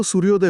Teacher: भौतिक दृष्ट्या आपल्या मुखात अ आणि उ च मिश्रण होऊन ओ हा नवा स्वर तयार होतो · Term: स्वर संधी